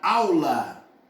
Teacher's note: Saiu alguma coisa pelo nariz não então ao é um ditongo oral